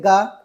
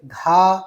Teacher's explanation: ग में कम वायु बाहर निकल रही है